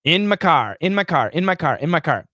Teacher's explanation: actually it's got kind of a tiny little bit of an h sound at the end · But in daily conversation, we reduce it. We reduce the vowel, and my can actually be reduced to a schwa.